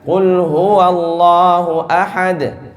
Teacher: Nah, wa in yakunis sukunu li ajlil waqfi kanatil qalqalatu abyan. Ya, ketika waqaf dia lebih jelas qalqalahnya.